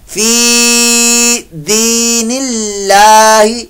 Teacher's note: अल्लाह के लाम से पहले जब जेर आ जाए तो फिर अल्लाह का लाम बारीक पढ़ा जाएगा